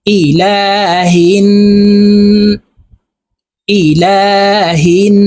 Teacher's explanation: বামে নুন এর উপরে তাসদিদ আছে তো ইহা এই নুনের সাথে তাসদিদওয়ালা নুনের সাথে নাকের বাঁশি থেকে গুন্নাহ করে পড়বো